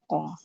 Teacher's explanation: pangkal lidah. Bertemu dengan langit-langit yang keras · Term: huruf ko